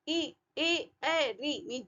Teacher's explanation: दांतों के आसपास ही आवाज रह रही है ना, ये ज्यादा दूर नहीं जा रही है। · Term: अग्र स्वर